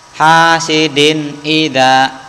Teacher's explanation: tanwin n-nya ini terdengar jelas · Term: idhar